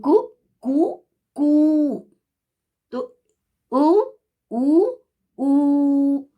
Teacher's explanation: पहले वो ह्रस्व बोलता है, फिर दीर्घ बोलता है, फिर प्लुत बोलता है